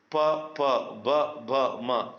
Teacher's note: ಓಷ್ಟ್ಯ ಅಂದ್ರೆ ತುಟಿಯ ಭಾಗದಲ್ಲಿ ಅಕ್ಷರಗಳು ಹುಟ್ಟುತ್ತೆ. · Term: ಓಷ್ಟ್ಯ ಅಕ್ಷರಗಳು